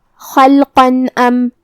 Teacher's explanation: ہم یہاں تنوین کو ظاہر کریں گے اور اسے نون ساکن پڑھیں گے اور بغیر غنہ سے یہ حکم کو ادا کریں گے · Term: اظہار